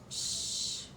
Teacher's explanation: in this case I don't feel any vibration in my throat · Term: voiceless sound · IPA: /ʃ/